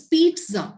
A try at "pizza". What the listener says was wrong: वो जो ट आता है ना, वो थोड़ा सा आना चाहिए. Otherwise, it doesn't sound good.